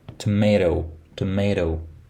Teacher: Tomato, tomato, an alveolar stop, T, and tomato, tomato, an alveolar flap. There is something between T and D, but some people also hear R.